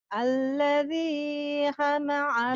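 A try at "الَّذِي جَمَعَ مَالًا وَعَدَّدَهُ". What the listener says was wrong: Ja, ja, ja. Detiknya di bawah tuh jim bukan Ja. Alladznya benar. Bukan hamaah, jamaah ini jim, ini jim, ini Jamaah. Jim. Jim ya.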